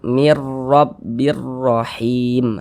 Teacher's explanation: Jika huruf ro memiliki vokal fathah, huruf ro dibaca tebal, dibaca sebagai tafkhim. Sehingga pangkal lidah kita terangkat ke atas saat kita mengucapkannya. Pertebal bunyi 'r'.